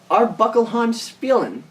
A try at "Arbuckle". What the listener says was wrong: Actually, it's just Arbuckle. The Spielen is silent.